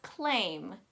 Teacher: That A takes on that nasally A kind of sound, and the I takes on that E kind of sound.